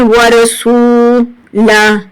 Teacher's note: سین کے بعد واو مدہ ہے اس لیے ایک الف کے برابر کھینچ کر پڑھیں گے